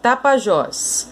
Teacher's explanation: A sílaba mais forte nós já vimos que é o Jós.